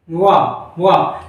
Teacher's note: अब दंतोष्ठ में कौन कौन से दांत और ओष्ठ कौन सा लगेगा, अगर हम देखते हैं तो ऊपर का जो दांत है, यानी कि ऊपर के दांतों से हमारे निचला वाला ओठ जब हम स्पर्श कराएंगे तो वा की ध्वनि निकलती है